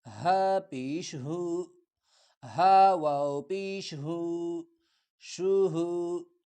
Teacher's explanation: ہا نرمی سے صرف گلے سے ہوا نکالتے ہوئے